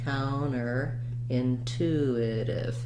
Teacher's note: so thinking about it as a light stress here counter intuitive your longest stress is going to be on that second word